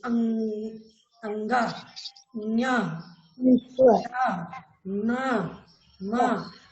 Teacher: अनुस्वार व्यंजन को जो हम उच्चारण करते हैं तो हमारे नाक से हवा निकलती है। अंगा, न्या, न, म बोल रहे हो ना, नाक से हवा निकल रही बाहर, ये अनुस्वार मान लिया जाता है।